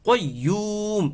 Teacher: মদের হরফ ওয়াও এর পরে মিম এর মধ্যে আমরা ওয়াকফু করেছি যার কারণে এখানে তিন আলিফ পরিমাণ টান হয়ে যাবে